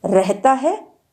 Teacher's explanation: र का ही महाप्राण रूप हिंदी में अब प्रयुक्त होने लगा है और वह है रह, विकसित हो गया है।